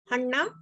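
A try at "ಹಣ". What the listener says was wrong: No, it's not hanna. It's just hana. There's no stress there.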